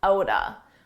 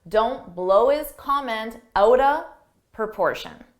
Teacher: Out of, you can reduce those into one sound, outa.